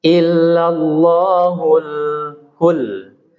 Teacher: alif lam pada alif lam qamariyah harus jelas berbunyi al ya. Berbunyi lamnya jelas.